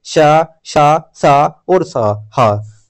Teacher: जिन व्यंजनों के उच्चारण में वायु मुख से रगड़ खाकर निकलती है उन्हें ऊष्म व्यंजन कहते हैं